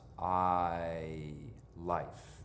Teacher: in my accent that vowel sound is a diphthong it moves it travels